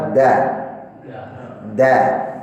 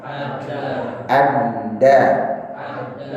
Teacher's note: Kalau lihat dari gerakan angin tertahan ya tanda panah itu angin itu tertahan sudah di ujung lidah ketemu dengan tempat atas